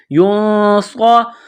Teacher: گے، اخفا کریں گے، یا نون پیش یوں، صاد زبر صا، صاد میں سیٹی کی آواز پیدا کرنی ہے، صاد کو موٹا کرنا ہے